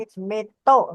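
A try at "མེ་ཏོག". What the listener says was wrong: Yes, you have to sound a little bit ka also. Metok. Metok. Metok. Like this. If you read like this, in the future, you will no face spelling problem.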